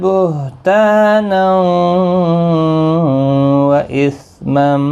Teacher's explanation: بہتانا تنوین کے بعد تا الف مدہ ہے، تنوین کے بعد یرملون کا واو ادغام مع الغنہ ہوگا